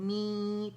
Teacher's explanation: یہ حرف مدہ میم کی آواز کو کھینچے گی 6 کاؤنٹ تک, می. ٹھیک ہے, می کر کے 6 کاؤنٹ تک سے کھینچیں گے اور پھر میم ادا کریں گے, میم.